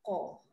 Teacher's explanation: Lidah yang dalam tu dia menyentuh ke atas